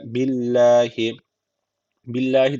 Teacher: Allah lafzı burada ince okunacak Çünkü öncesindeki harfin harekesi altta yani Allah lafzına alttan geliş yapılıyor billahi bir Elif uzatıyor çeker